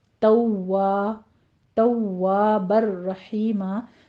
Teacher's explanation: काना तव्वाबर रहीमा में वाव मुशद्दद है, सख्ती कीजिए